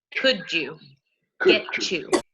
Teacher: So the Y sound is the one that changes to a j or a ch